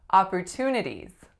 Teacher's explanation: I'm making that low back vowel oo as in off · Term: low back vowel ah